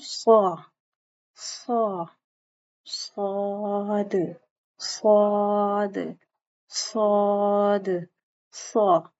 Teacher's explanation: زبان کی نوک کو دونوں دانتوں کے اوپر اور نیچے کے سامنے کے دو دانتوں کے درمیان میں رکھو گے اور اپنی زبان کو پیچھے سے بلند کرو گے